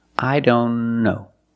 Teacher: here the t is between consonants so we don't pronounce it · If you link the sounds, I don't know. Link the N with the other N.